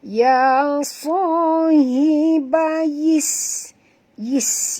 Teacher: Satu sin yang mati yang pertama, yang kedua sin berbaris bawah. Sebab itu kita kena bunyikan safir itu dengan jelas kerana sin itu mati ya